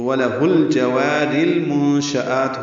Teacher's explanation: میم کو نون سے ملانا ہے. نون ساکن کے بعد شین آنے کی وجہ سے اخفا ہے، نون کی آواز چھپائیں گے. شین کو جلدی پڑھیں گے.